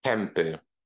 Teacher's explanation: the nasal resonance turns into consonant M because our lips are getting close to pronounce the letter P